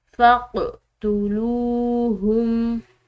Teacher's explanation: کو روک کر پڑھیں تو یہ غلط ہو جائے گا، بلکہ ہم نے اس قوف کو ہلاتے ہوئے ادا کرنا ہے، یعنی کہ ایسا محسوس ہو کہ گویا کہ اس کے مخارج جو ہیں وہ آپس میں ٹکر کھا کر الگ ہوئے ہیں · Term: قلقلہ